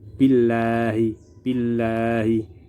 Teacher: Contoh bacaan tarqiq: billahi billahi. Lafal Allah di sini berada setelah huruf yang bertanda baca kasroh, maka dibaca tipis.